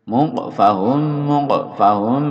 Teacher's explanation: mimnya dilebur jadi satu dan didengungkan dipanjangkan